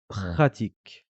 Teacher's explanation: C'est ce R qui racle la gorge comme ça. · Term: la lettre ra